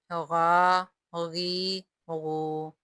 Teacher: غین ابتدائی حلق یعنی حلق کے اوپر والے حصے سے ادا ہوگا